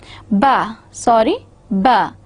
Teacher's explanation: again bilabial, stop, but a voiced sound